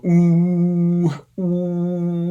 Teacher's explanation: But cardinal vowel 8 is U, and that's the highest, backest, roundest vowel you can possibly produce